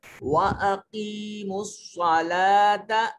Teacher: لام کے اوپر کھڑا زبر ہے, اس کو لمبا کریں گے.